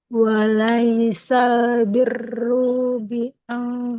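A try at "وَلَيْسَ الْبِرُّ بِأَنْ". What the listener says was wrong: Nggak panjang. Biru. sama-sama sedikit koreksinya untuk panjang pendeknya. Hati-hati ya. Ingat tiga tandanya. Fathahnya ketemu alif, dhammah ketemu waw, kasroh ketemu ya, baru panjang.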